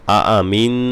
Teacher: অবশ্যই যেন গুন্না গুলো আদায় হয় নাকের বাঁশি থেকে আদায় হয়